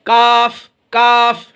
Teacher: तालू से कुछ हटकर, तालू से कुछ हटेगा, तालू से मिलेगा नहीं, अलग रहेगा। तो जड़ जुबान तालू से कुछ हटकर काफ अदा होता है। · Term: छोटा काफ